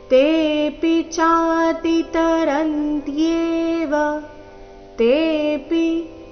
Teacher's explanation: ತೇಪಿ ತೆ ದೀರ್ಘ ಪಿ ರಸ್ವ